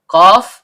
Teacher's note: Qaf, pangkal lidah naik ke langit-langit di atasnya.